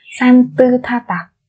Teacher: Thi ực với A là tha mà các bạn, đúng không nhỉ? Thế thì phía trước chúng ta sẽ không đọc là tức nữa, mà chúng ta chỉ đọc là tư thôi. Bỏ cái bà chim này đi vì nó đã kết hợp với phía sau rồi.